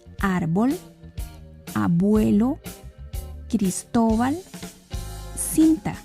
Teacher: el acento en estas palabras está antes de la última sílaba es decir en la penúltima sílaba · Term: graves